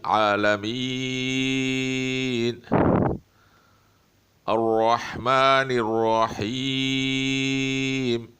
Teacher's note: اب عالمین یا کے بعد جو حرف ہے اس پہ وقف کیا جا رہا ہے، یہ آخر میں یا جو ہے اس پر کوئی مد نہیں ہے، لیکن چونکہ اس کے بعد وقف کیا جا رہا ہے تو اس کو 3 الف کے برابر کھینچا جائے گا، یعنی تقریباً 3 سیکنڈ بعد۔